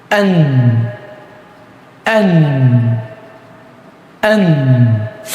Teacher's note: কিছুক্ষণ সময় নাক দিয়ে বাতাস বের করতে হবে